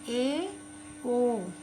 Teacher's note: और चौथा भाग है अर्ध संवृत। जिन स्वरों के उच्चारण में मुख आधा बंद रहता है उन्हें अर्ध संवृत कहते हैं।